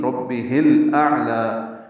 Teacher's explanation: اعلی میں حمزہ اقصی حلق سے ادا کریں گے، عین سے ملائیں گے، عین پہ اظہار ہے یعنی اس کو ظاہر کرنا ہے، لام پر کھڑا زبر دو حرکات لمبا کریں گے.